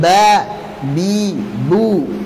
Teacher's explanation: Saat berharakat huruf ba keluar dari asy-syafatain.